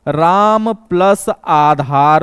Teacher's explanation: राम में भी अ है और यहां पे आ है दोस्तों, तो अ के साथ आ मिलता है दोस्तों तो आ में बदल जाता है और वह दीर्घ होता है अक सवर्णे दीर्घ। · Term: दीर्घ स्वर संधि